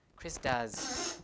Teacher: all vowels are voiced so s has to be voiced as well because of assimilation